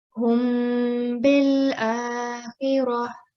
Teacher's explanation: This will be read as hum bil akhirah. 2-second nasal sound on mim. · So this is ikhfa of mim sakin. So the sound of mim sakin will be softly prolonged for 2 counts, and we call this ikhfa shafwi.